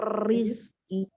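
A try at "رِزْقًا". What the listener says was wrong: Terlalu takrir. Jangan mir. Coba lagi.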